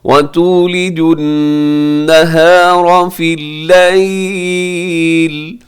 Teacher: یہاں فی النہار میں نون کی پر تشدید ہے تو غنہ ہوگا. نہاری میں را باریک ہے کیونکہ را کے نیچے زیر ہے